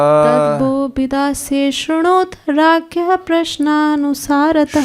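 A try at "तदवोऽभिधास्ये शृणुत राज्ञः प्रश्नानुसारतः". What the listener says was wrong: शृणुत होगा, श्रुणुत नहीं होगा, हलंत नहीं है। तदवो अभिधास्ये शृणुत राज्ञः प्रश्नानुसारतः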